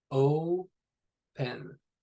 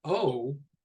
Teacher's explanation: But if we have just the exclamation of oh, it has that w, kind of that companion vowel with it. It's lengthened a little bit. It has the w, you kind of draw it out.